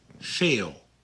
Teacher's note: The V on the beginning of a word is pronounced more like an F